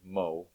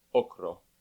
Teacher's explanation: in English we pronounce o with a bit of a w after it